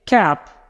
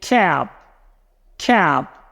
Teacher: before the P ending we say cap short and sharp but before the B ending we say cap cap we stretch out the a · We're adding vibration. So in cap, the a is short and sharp. In cab, we lengthen it.